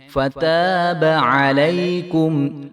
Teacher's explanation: فتاب تینوں حرف جو ہیں وہ باریک ہیں. فتاب علیکم انہ هو التواب.